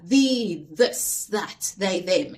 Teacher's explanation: you feel a vibration in your throat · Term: voiced